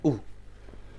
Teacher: इनका उच्चारण करते समय आगे वाला हिस्सा यूज होता है, लेकिन ऊ को जब बोलते हैं तो जीवा का अंतिम हिस्सा जो पश्च भाग है, पश्च का मतलब पीछे वाला जो भाग है, वह इसके उच्चारण में यूज होता है। तो इस प्रकार पश्च भाग में उच्चारण होने वाला जो स्वर है वह है ऊ।